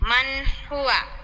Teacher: মান বলে কিন্তু ধরে রাখা যাবে না, মান বলে ছেড়ে দিতে হবে। মান হুয়া। জি। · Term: ইজহার